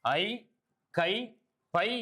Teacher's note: ஐ, கை, பை என ஐகார எழுத்து தனித்து வரும் இடங்களில் தனக்குரிய 2 மாத்திரை அளவில் முழுமையாக ஒலிக்கின்றது